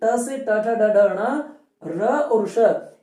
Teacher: रटने का रस कहां से, मूर्धा। री से री, ट से ट ठ ड ढ ण, र और श इनका उच्चारण स्थान मूर्धा से है।